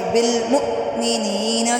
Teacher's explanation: حمزہ ساکن جھٹکا دیں گے